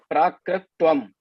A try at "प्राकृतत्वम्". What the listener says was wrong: It is tvam or what? Tattvam, na? Tvam or tattvam? No, prakritatvam.